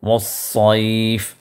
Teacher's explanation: پھر والصیف کے اندر صاد ہے تو صاد کو پر کر کے اس کو ادا کرنا ہے، سین کی طرح ادا نہیں کرنا ہے. والصیف تو پر کر کے اس کی ادائیگی ہو.